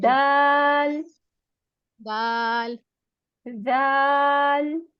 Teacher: जुबान की नोक ऊपर वाले दांतों के किनारों से लग रही है